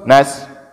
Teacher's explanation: sifatnya dia berdesis dan berangin, itu huruf sin